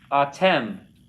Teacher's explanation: Accent on the last syllable.